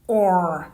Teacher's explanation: This is one of my favorite words. Now, for the Americans, this is often pronounced as or with a lot of R. The R sound is so obvious, or. But for the British, it is quite short.